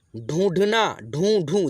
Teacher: देखिए नाक से उच्चारण आ रहा है कि नहीं दोस्तों, नाक और मुंह दोनों की यानी कि मिलने से उच्चारण आ रहा है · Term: अनुनासिक